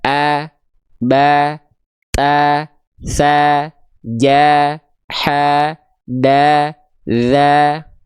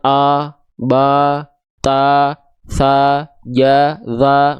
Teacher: semua yang vokalnya A itu dia berarti kadarnya tipis.